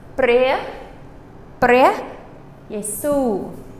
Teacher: Su is your accented syllable. Okay? So we don't just say Yesu, Yesu.